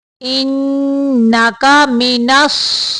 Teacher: सौत को मोटा पढ़ना है, गैन को भी मोटा पढ़ना है और रा को बारीक पढ़ना है।